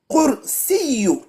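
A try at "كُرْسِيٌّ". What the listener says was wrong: Deux choses. À la fin, il y a deux. Dammatan. À la fin, c'est deux. Non, deux, ça fait quoi? Voilà, yun. Par contre, ton kaf, il est mélangé avec qaf. ka.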